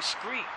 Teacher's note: There was no STR sound in West African languages, so street became screet.